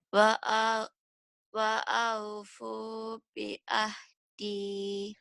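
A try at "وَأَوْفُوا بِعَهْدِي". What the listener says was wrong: Itu bagus ya Bu ya, jangan dirubah lagi.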